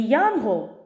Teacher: перша буква Я у слові дає звукосполучення й а два звуки